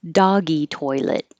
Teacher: it ends with a T so you hold your tongue in the T position and not release it